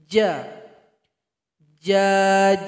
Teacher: fishtales Annisa huruf berikutnya adalah huruf Jim dikasih harokat menjadi jadi gimana keluarnya itu dari tengah lidah tempelkan ke langit-langit kita jazzyfact nya juga syiddah suara tertahan juga ketika membacanya ja ja